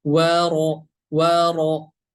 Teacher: Kemudian huruf ro berharokat fathah. Huruf ro berharokat fathah, cara membacanya harus tebal. Bagaimana cara membaca huruf tebal? Yaitu dengan menaikkan pangkal lidah kita ke atas.